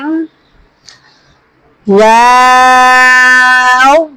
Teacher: बा मी दोनों होठों के खुश हिस्से से अदा होता है। मी वाव दोनों होठों की गोलाई से अदा होता है। · دونوں ہونٹوں کی گولائی سے ادا ہوتا ہے